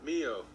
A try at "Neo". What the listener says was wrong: Neo. With an N.